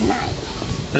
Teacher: Great Andamanese don't have a short vowel, so she instead of nahi, she says nai.